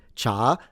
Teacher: The Chinese in Mandarin pronounce it cha, second tone.